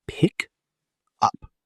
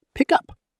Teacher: The consonant sound at the end links smoothly into the vowel of the second word. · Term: linked sound blocks